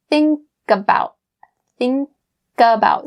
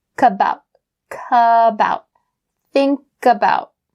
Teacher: So bring that K sound from think to about, kabout, kabout.